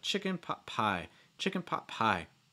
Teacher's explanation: stress on the last word so for instance chicken pot pie pie should be your heaviest stress chicken gets a little bit of stress pot gets reduced and then pie gets a heavy stress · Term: three word group